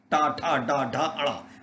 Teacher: टा देखो तुम टा जैसे बोलोगी, जीभ पीछे चली जाएगी। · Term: मूर्धन्य